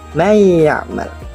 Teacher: Nun sukun bertemu dengan ya. Nun sukun dibaca samar, namun ya dibaca dengan gunnah atau dengung. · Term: Idgham bigunnah